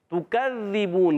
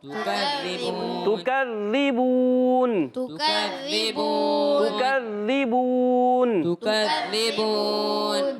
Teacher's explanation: ذال مشدد ذرا رک کر ادا کریں گے، ذال کو زا نہیں کرنے